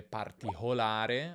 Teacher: Questa C aspirata tra vocali è una delle caratteristiche più tipiche del fiorentino e del toscano